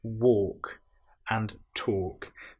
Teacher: in both of these words, walking and talking, we have the L, which isn't produced. It's not, we don't hear the L woke.